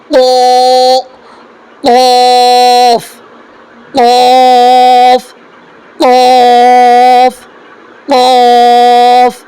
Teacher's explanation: قاف جو یہ اوپر میں یہاں جو گلے کے اندر جو ایک کوا کے ایسا لٹکا ہوا رہتا ہے یعنی لول کی طرح، کوا کا لول کی طرح جو لٹکا رہتا ہے، ہم کو اسی کو تھوڑا سختی سے وہاں پر ہم کو آواز نکالنا ہے.